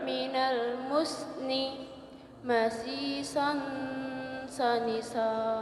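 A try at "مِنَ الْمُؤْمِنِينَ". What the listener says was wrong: Masi ya. Bukan masih biasa tapi masi sani sa diangkat ya. Dibuka mulutnya sani sa gitu, coba.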